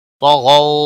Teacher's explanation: کے برابر کھینچ کر پڑھیں گے، نہ کو کھینچنا نہیں، طغوا طا اور غین دونوں حروف مستعلیہ میں سے ہے، موٹے پڑے جائیں گے ، غو واولین ہے، تھوڑا نرمی کے ساتھ کھینچ کر ادا